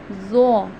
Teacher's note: ज़ुबान का जो हमारा सिरा है उसको हम ऊपर के दांतों के अंदरूनी किनारों से टच करते हैं